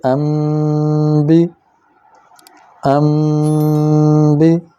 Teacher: یہاں دیکھیے نون ساکن ہے اور اس کے بعد با ہے، یہاں بھی آواز ناک سے لمبی ہو کر ادا ہوگی، لیکن آپ دیکھیں کہ اوپر چھوٹا سا میم لکھا ہوا ہے، یہ اس وجہ سے کہ نون ساکن کے بعد با آ گئی ہے۔ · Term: اقلاب